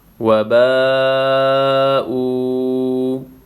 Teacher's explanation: او، وباءوا، بڑا مد ہے، 5 الف کی مقدار کھینچنا ہے۔ واو ساکن پہلے پیش ہے، اس کو بھی 1 الف کی مقدار کھینچنا ہے۔ · با الف مد زبر با، وبا حمزہ واو فیش او، وباءوا، بڑا مد ہے، 5 الف کی مقدار کھینچنا ہے۔